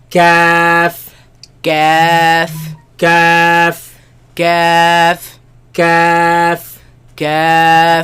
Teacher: There's a difference, very slight difference, and that is between the soft and the hard palate. Where the hard palate ends and the soft palate begins, that's where this letter comes from.